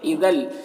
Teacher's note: اذل یہاں پر لام ساکی تنوین کے بعد لام ہے، حروف جر مرور میں سے، تو تنوین کو لام سے ملا کر پڑھیں گے بغیر غنہ کے، اس کو ادغام تام کہتے ہیں